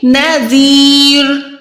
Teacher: रॉ जो है 2 पेश के साथ है लेकिन वक़ुफ़ करने के टाइम 2 पेश भी वो जो है साकिन में कन्वर्ट हो जाते हैं